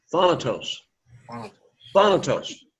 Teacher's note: The emphasis is upon that first syllable